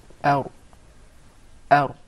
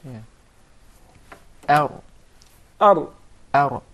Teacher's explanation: You make sure that there is a slight striking, or the tip of the tongue would hit the gum to be pronounced properly without rolling or the repetition of the ra